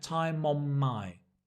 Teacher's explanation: So time on, mon, and the N and the N on my becomes one sound. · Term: link